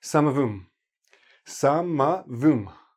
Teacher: It blends together. And the H is there, but it's very soft and very weak, so you don't really even hear it. Samavum. Samavum.